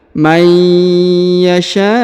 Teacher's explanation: huruf nun sukun bertemu dengan ya bertasdid, maka dia ditahan dan ditekan, lalu huruf nun sukunnya melebur ke huruf ya dan menghilang